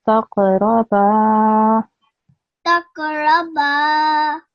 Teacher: this qaf is a qalqala letter, so you have to give it a soft jerk